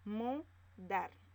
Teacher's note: La mayor fuerza de voz está en la sílaba dar.